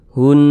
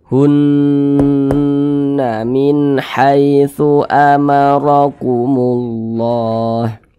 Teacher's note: Maka cara membacanya digunnahkan. Digunnahkan, jadi suaranya itu kita tahan. Kita panjangkan sejenak. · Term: gunnah musyaddadah